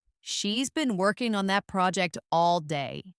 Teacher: The stress here falls on been, working, project, and day.